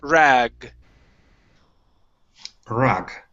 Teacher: your tongue is going to be in the exact same position but you want a g sound to come out it's a voice sound